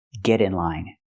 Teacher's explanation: We hear the pronunciation of T change to a fast D because it's between vowels.